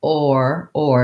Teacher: or is more central and gliding